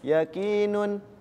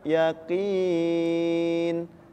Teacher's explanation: domah Tain kemudian ada harakat dah ada kasratain ya kan tapi ketika diwakafkan di akhir kalimat atau di akhir ayat maka dibacanya disukunkan